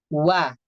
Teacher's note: huruf wawu atau waw dengan memonyongkan bibirnya tanpa merapatkan.